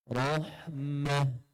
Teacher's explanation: Ra tebal. Tetapi masuk ke dalam ha nipis.